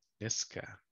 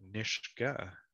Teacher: you would have said niska with a k sound niska you said nishtka with an sh sound